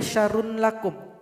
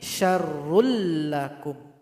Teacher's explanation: Contoh berikutnya ada tanwin, dhammatain berjumpa dengan lam. Maka dhammatain ini mesti dilebur, digabung kepada huruf lam ini dan tidak boleh didengungkan. · Nun sukun berjumpa dengan ra, maka dibaca idgham bila gunnah. Nun sukun mesti dilebur kepada huruf ra tapi tidak dengung.